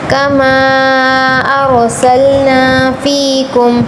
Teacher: را پر تفخیم کرنی ہے، کما کو کھینچ کر پڑھنا ہے